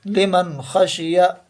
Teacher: یہاں پر یہ دونوں تنوین کے بعد حروف حلقی کے حرفوں میں سے آئے تھے، اور یہاں پر نون ساکن کے بعد حروف حلقی کے 6 حرف میں سے خا آیا ہے، تو ہم یہاں پر بغیر غننے کے نون کو ظاہر کر کے جلدی پڑھیں گے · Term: اظہار